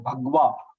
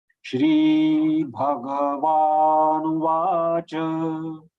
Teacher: So here also we are compromising with the ga. Ga is pronounced as halanta, which is not correct. Ga is complete.